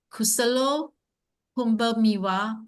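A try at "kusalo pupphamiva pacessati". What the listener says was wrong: There's no M, only double P. Pupa. Pupa.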